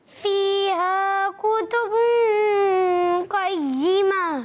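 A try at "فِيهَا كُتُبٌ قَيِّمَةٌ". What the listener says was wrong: ऑफ को और पूर करें तो और अच्छी बात है, थोड़ा और पूर हो जाए एक मरतबा फिर।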